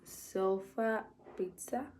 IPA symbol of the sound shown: ə